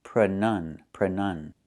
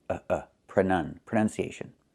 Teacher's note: But the noun is pronunciation with a short uh sound.